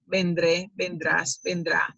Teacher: the pronunciation goes in that last syllable where the accent mark is